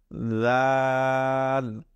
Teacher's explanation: আমরা সেই সা যখন উচ্চারণ করেছিলাম সেই সায়ের উচ্চারণ আর এই দালের উচ্চারণ কিন্তু ঠিক একই জায়গা থেকে উচ্চারিত হবে। অর্থাৎ আমাদের জিহ্বার আগা এবং উপরের দাঁতের আগার সাথে লাগিয়ে এই দাল উচ্চারিত হবে